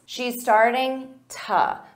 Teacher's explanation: So instead of to, you can use an unstressed to.